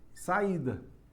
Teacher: A tônica do iato é a segunda das vogais do iato. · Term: tônica do hiato